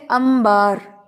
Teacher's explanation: امبرین جو ہے نام ہے، تو واقعی وہ بھی جو ہے نون کے بعد با ہے، تو ہم اس کو امب یعنی کہ میم کی ادائیگی سے پڑھتے ہیں